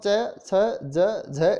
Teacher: जीभ है वो टच करती है तालु को, और स्पर्श करने के बाद में पूरी तरह से वो स्पर्श नहीं कर पाती, हवा को रोक नहीं पाती, और हवा और जीभ के मध्य, तालु और जीभ के मध्य हवा का एक प्रकार से संघर्ष होता है, घर्षण होता है, हल्का संघर्ष होता है, तो इसलिए उसको स्पर्श संघर्षी कहा गया है।